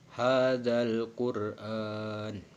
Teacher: mengucapkan huruf ro dengan tebal sampai memenuhi mulut ketika mengucapkannya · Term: ro tafhim